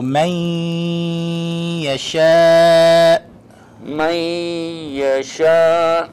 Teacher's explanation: The noon has been combined with the ya, and it becomes idgham, and we hold it for 2 seconds. We do the ghunnah, therefore it is called idgham bi ghunnah letter.